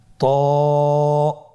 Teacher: এটা উচ্চারণের সময় অবশ্যই মোটা করতে হবে এবং উচ্চারণ করার সময় এক আলিফ টেনে পড়তে হবে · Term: মোটা হরফ